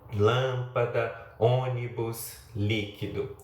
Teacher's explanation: proparoxítona, que é aquela cuja sílaba tônica é a antepenúltima